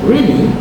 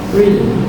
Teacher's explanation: When someone says really in a rising tone, it can show surprise when the same word is said with a falling tone such as really.